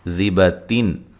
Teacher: یہاں نون تنوین کا اظہار ہے، ٹھیک ہے، غنہ نہیں کریں گے